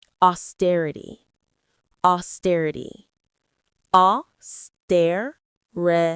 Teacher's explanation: The stress is on the stir.